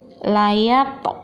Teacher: to-nya itu dipantulkan aja, jangan ditahan. Layak, kalau bacaannya layat, nah itu salah ya. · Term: qalqalah sughra